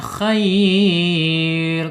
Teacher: Ketika diwakafkan menjadi ee mad lin ya khair lah rnya tebal harus dibaca tebal ya